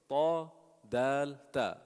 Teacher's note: The tip of the tongue touching the upper teeth, the upper incisors.